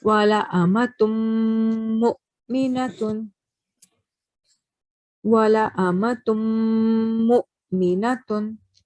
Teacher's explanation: Over here you can see that there is mim mushaddad. So we are going to again prolong the nasal sound for 2 seconds.